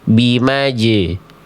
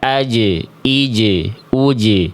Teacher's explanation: Jim itu dia punya sifat qalqalah, sifat memantul. Maka pastikan ketika teman-teman melafalkan jim sukun ini, dia memantul.